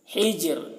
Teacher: را ساکن سے پہلے یہاں پر جیم ساکن ہے، پھر اس سے پہلے زیر ہے، تو یہاں پر را کو باریک پڑھیں گے